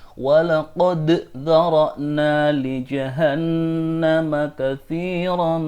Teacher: Harus diingat bahwa dal tidak menghilangkan huruf qalqalahnya. Dal di sini jangan sampai dihilangkan huruf qalqalahnya.